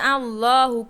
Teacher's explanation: আল্লাহু পুর করে মোটা করে পড়তে হবে